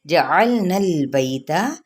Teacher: جیم کی حرکت کو لمبا نہیں کریں گے اور لام کو ہلانا نہیں، نون کی زبر کو لام کے ساتھ ملائیں گے